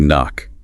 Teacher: We never pronounce the k, it is simply knock.